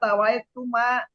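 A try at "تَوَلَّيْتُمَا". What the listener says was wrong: tawalai. Jangan buru-buru Bu. Tawalai. Jangan buru-buru. Ibu tawai tadi. Laju dihilang lama-lama karena buru-buru.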